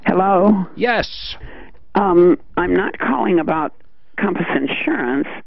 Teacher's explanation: You got that vocal fry going, but go ahead.